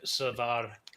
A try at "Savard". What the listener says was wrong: Savard, no D. If you go dirty Quebec, it's Savard. Savard. So the first A is Sa and then